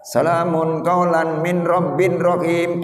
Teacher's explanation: nun sukun berhadapan dengan roh maka hukum bacaannya idgham bilagunnah